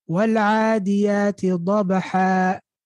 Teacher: What did we do? We kept the fatha. We got rid of the tanween. And then now the alif comes in handy. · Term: with a med